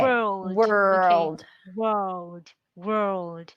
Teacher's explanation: you're having the R, the L. That's why we have the dark L, right? World.